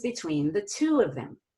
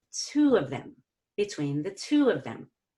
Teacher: so I go up on two and I go down on of them okay very simple we rise in pitch on two and then